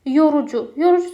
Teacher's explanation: yorucu sözündə o, u, u hər üçü qalın saitdir